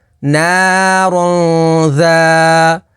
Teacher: تنوین کے بعد ذال ہے، ذال حروف اخفا میں سے تو یہاں پر اخفا ہوگا یعنی غنہ کر کے پڑھیں گے، اور الف سے پہلے زبر ہے تو الف مدہ ہوگی۔